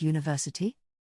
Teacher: even though university starts with a vowel letter, it sounds like it begins with a Y sound